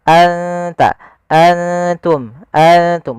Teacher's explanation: nunnya kita samarkan ke huruf ta langsung, seakan-akan kita melafalkan huruf ta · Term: ikhfa